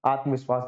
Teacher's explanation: आत्मन plus विश्वास न का लोप हो गया